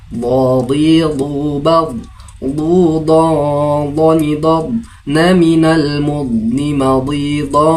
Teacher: makharijul hurufnya berada pada tepi lidah serta sekitar gigi geraham atas dengan sisi lidah menempel pada gigi geraham tersebut. Lidah tidak dikeluarkan ya. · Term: Huruf dod